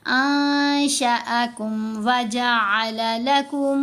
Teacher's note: نون ساکن کے بعد شین ہے، اخفا کرنا ہے، نون کو ناک میں چھپانا ہے